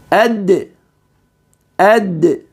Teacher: نرى بانه يخرج بتصادم طرف اللسان العلوي مع اصول الثنايا العليا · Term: حرف الدال